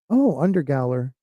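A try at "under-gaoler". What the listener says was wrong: Under jailer. No, it's jailer. Gaol is jail. It's a proper way of spelling jail.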